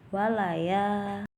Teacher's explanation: ada mad tabi'i pada bacaan walaya, sebab di situ ada fathah bertemu dengan alif, maka dibacanya panjang